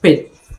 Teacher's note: in this case the p is followed by noticeable puff of air